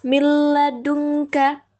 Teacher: ini nunnya nggak dibaca, jadi nunnya langsung melebur ke huruf selanjutnya, yaitu huruf lam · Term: idgham bila gunah, idgham bila gunnah